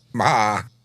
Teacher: That word begins with the lips closed and an onset of vibration in the larynx, right? than a vowel sound.